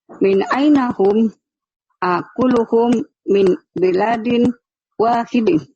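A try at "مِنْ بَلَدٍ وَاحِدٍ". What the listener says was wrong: Salah, ini balad, bukan bilad. Nanya pendek, Bu. Min baladin. Ulang lagi.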